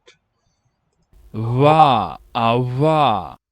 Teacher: One thing you might hear there is a labiodental approximant. · The v sounds between a W and a V.